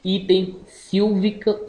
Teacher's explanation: fechado frontal oral não arredondado